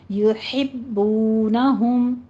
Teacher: یحبونہم، یو کے اوپر ہونٹوں کو گول کر لیجئے، اندادیں یحبونہم، ہا وسط حلق سے باریک ادا کیجیے اور با کے پر تشدید ہے، سختی کے ساتھ پڑھنا ہے